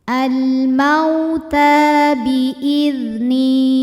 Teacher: Al-mauta, ta hukumnya mad tabi'i muqaddar sebab ta berharokat fathah panjang. Cara membacanya ta dipanjangkan 2 harokat.